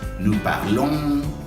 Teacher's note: Nous jamás suena la S.